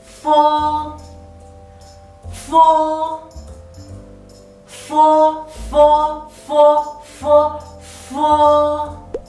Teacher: Fo is a labiodental and fricative initial. When you pronounce it, your upper teeth has to touch lower lip tightly.